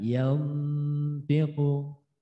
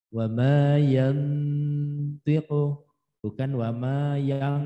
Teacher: Jadi dekatnya ke idhar, maka nunnya tetap sukun lalu mendekati to. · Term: ikhfa aqrab